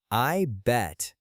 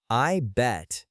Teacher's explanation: the T at the end of bet is what we call a stop T or a glottal stop. You do not release the air.